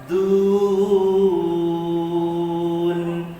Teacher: Kha man asli lidun. Du huruf dal, hujung lidah sentuh pangkal gigi atas.